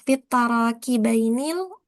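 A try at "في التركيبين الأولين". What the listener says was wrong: Bukan tara. Roknya sukunkan saja. Fitar.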